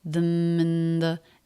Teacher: Ending M, linking right into beginning vowel, and the N right into the TH sound with no break.